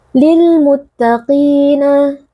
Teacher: ada ya sukun yang sebelumnya berharakat kasrah dibaca panjang dua harakat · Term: Mad thbii'i